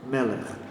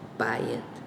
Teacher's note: The words like Bayit, Melech, and Nar are all accented on the first syllable as opposed to usual last syllable.